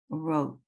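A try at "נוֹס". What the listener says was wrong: Nose. It's an N. Nose.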